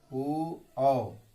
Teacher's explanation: ऊ औ, इसका उच्चारण कंठ और होठ दोनों से होता है